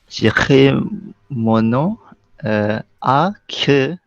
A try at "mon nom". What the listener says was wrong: So, j'écris mon nom, there's no N, there's no M, mon nom.